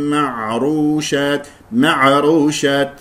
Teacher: الراء مفخمه لانها مضمومه